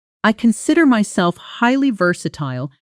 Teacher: with versatile clearly the loudest clearest word in the sentence